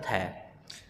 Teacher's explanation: स्पर्श दंत अघोष और महाप्राण वर्ण